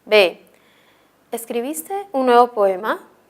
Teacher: esta es una oración interrogativa y su respuesta puede ser sí o no por lo tanto su tono es ascendente